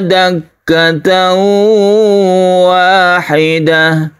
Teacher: suara tanwin itu sudah melebur atau masuk ke huruf wau sehingga timbullah tasydid wau di sini jadi tasdid wau ini merupakan cara membaca bukan asli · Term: Idgham biguna